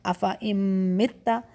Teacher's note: نون کی آواز کو ہم چھپاتے ہوئے میم پر جا رہے ہیں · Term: ادغام